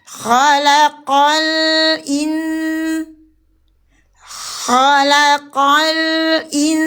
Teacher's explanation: Ah, huruf lamnya jangan ikut tebal.